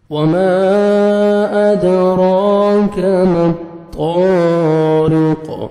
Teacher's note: तो को मोटा करके पढ़ेंगे, 1 सेकंड खींचना है, अलिफ मद है, रॉ को बारीक पढ़ेंगे और कॉफ साकिन हो जाएगा, डबल साउंड आएगा।